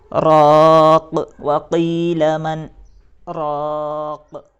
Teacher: اور یہاں پر ہمیں وقف کرنا ہے تو ہم اس آخر حرف کو ساکن بنائیں گے اور سانس کو توڑ دیں گے